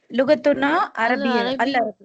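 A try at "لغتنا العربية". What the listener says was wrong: நீங்க ஏன் அப்படி அல்ல பிரிச்சு சொல்றீங்க? எல்லாம் சேர்த்து தானே சொல்லணும். இப்ப ரப்புனா அல் அல்லாஹ் அப்படி என்ன சொன்னீங்க? ரப்புனா அல்லாஹ் சொன்னீங்க. அதே மாதிரி லுகத்துனா அத்தாமிலியத்து சொல்லாம லுகத்துன தாமிலியத்து, லுகத்துனல் அரபியத்து, லுகத்துனல் உர்தியத்து, லுகத்துன சின்ஹாலியத்து சேர்க்கணும். லுகத்துனா அத்தாமிலியத்துன்னு இருக்கும். சேரும் பொழுது அந்த அலிஃப் எல்லாம் விழுந்துரும். லுகத்துன தாமிலியத்து, لغتنا التاميلية طيب الخامس أين مدرستكم؟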